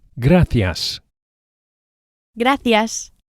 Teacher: The C of gracias is pronounced as an English TH, as in thanks